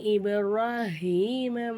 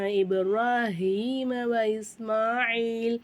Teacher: இப்ராஹீம் பாக்கு மேல சுக்குன் வந்ததுனால கல்கலா செய்யணும்